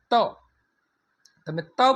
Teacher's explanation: ત બોલો છો ત્યારે તમારી જીભ દાંતને અડકે છે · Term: દંત્ય